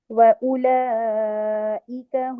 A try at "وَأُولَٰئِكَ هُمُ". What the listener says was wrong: واؤ گول ہونٹوں سے واو کا مخرج گول ہونٹ، اور گول ہونٹ اتنے گول ہونٹ جیسے ایک پرندے کی چونچ ہوتی ہے نا، باہر کو منہ نکال کے آپ اپنی چونچ بنائیں، ٹھیک ہے، وہاں سے واو ادا کریں، دانتوں کے قریب رکھ کر نہیں.